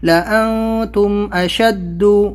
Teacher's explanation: نون ساکن کے بعد میں تا اخفا لیٹر ہے تو یہاں پر ہم اس کو اخفا کریں گے